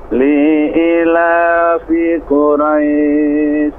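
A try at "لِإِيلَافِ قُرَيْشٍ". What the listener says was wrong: Baik, li-nya tidak panjang. Li'i, i-nya 2 harokat. Fi-nya juga tidak panjang. Li'ila, ila-nya 2 harokat. Yang lain tidak. Li'ila.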